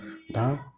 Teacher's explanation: दंती महाप्राण घोष व्यंजन वर्ण होगा